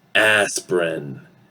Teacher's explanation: it's like an open or wide A sound. Okay, that we usually say a lot in American English. Okay, a, is wide, okay, and it's sort of like smiling.